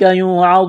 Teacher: واو ساکن سے پہلے پیش ہے، حروف مدہ واو ہے، الف کے برابر کھینچنا ہے، واو کو موٹا کرنا ہے، نون ساکن کے بعد کاف ہے، حروف اخفا ہے، غنہ کریں گے، آواز ناک میں چھپائیں گے۔